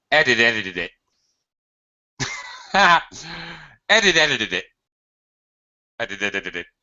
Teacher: That's really how it would sound in the native speaker, reducing everything to schwa sounds.